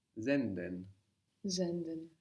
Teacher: So again we have the S sounding like a Z.